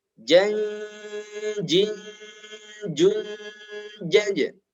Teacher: Ketika disambung, hati-hati setiap ada tanwin, tanda ini, bertemu dengan huruf jim, maka dibaca dengung yang lama, yaitu ikhfa